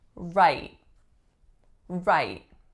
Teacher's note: the way I'm saying it it has an unreleased T